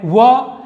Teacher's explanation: इसे हम दंतोष्ठ कहते हैं क्योंकि दांत और ओठ के सहारे इनका उच्चारण होता है